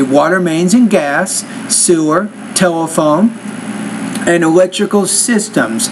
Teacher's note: when you're saying those points, A, B, C, D, so the intonation needs to kind of rise a little bit · So once you get to the last idea, drop your intonation a little bit, and that tells your audience you're done with those ideas.